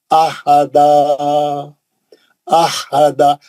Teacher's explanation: अहदा हा कैसा बीच हलक से सेंटर वाले हलक से